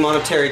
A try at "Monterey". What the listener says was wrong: Monterey? You said monetary.